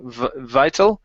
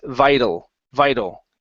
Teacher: that t in the middle is going to be treated as a flap T